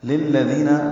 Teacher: للذین لام باریک دال نرمی سے ادا ہوگا، دی یا مد ہے.